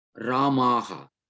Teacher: Final Sakara becomes a Visarga.